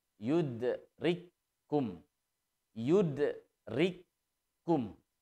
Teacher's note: seolah-olah ditasydid langsung yudrikkumul tanpa menunaikan sifat hams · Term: idgham mutamatsilain